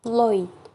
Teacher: not only does the tongue move, but the lips change shape too. The tongue moves from the position for the O vowel to the position for the E. Thus, in the symbol is OI and Lloyd transcribed as Lloyd.